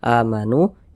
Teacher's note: Mad thi'i panjangnya dua harakat · Waw sukun ini pasangannya nih harokat dhammah. Sehingga nu dibaca panjang, mad tabi'i panjangnya 2 harokat.